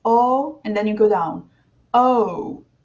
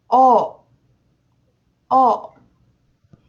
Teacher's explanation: The Italian letter goes up, but never goes back down.